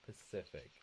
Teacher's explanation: it's the stress on the second syllable